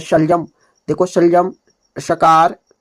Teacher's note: हमारा जो जीभ है वो ऊपर जा रही है ये ऊपर ऊपर वाले दांत के ऊपर वाले हिस्से को टच कर रही है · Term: शलजम वाले श